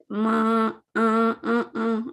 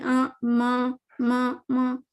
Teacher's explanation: بس یہ ناک کے اندر سے سانس پاس ہوئی تو ایک غننے کی آواز آ گئی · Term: غنہ